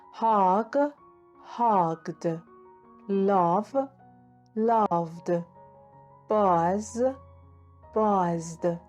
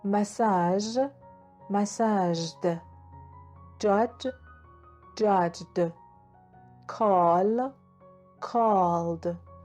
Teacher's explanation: Pay attention, the vowels are also voiced sounds. When the final sound of a verb is a voiced consonant, the ed ending is pronounced as d.